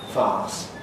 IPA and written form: faːs (farce)